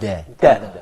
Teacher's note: the second feature here is place of articulation is alveolar